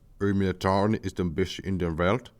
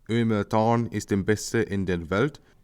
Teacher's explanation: traditional Yukini often pronounces the R's, whilst modern Yukini, or the Yukini in Yukinistan and Axumoni, don't tend to pronounce the R's